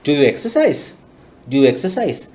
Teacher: හඬ වැඩි පැත්තට තමයි යන්නේ. මොකද උත්තරේ yes ද no දනේ.